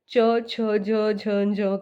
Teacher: तो हमारी जो जीभ है वो स्पर्श कर रही है तालू को